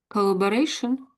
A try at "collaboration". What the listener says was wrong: Yeah, that's pretty good.